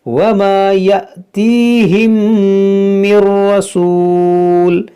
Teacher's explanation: یہاں میم ساکن کے بعد دوسری میم ہے، تو یہاں پر ادغام شفوی ہوگا